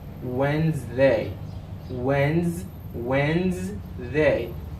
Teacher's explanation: There is a Z sound. We got the D in this word. It's a silent letter also.